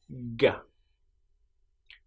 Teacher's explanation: So for the sound G, we close our mouth at the back. So where the the back of our tongue is and the roof of our mouth, we put them together like that. And then we say G.